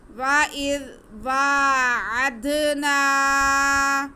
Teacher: اگر نون پہ زبر ہے اور ساتھ میں الف ہے تو یہ الف مدہ ہو گیا۔ نون کے بعد ہم ایک الف کے برابر کھینچیں گے